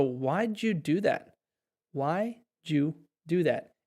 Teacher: Why did you do that? And oftentimes, we'll even take out just did and we'll just say you. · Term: connected speech